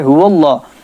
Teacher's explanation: اس سے پہلے زبر آ جائے اللہ کے لام سے پہلے تو لام موٹا ہوگا، لیکن یہ اللہ یا اللہم کا لام نہیں ہے، اس لیے ہر صورت میں ہم اس کو باریک ہی پڑھیں گے۔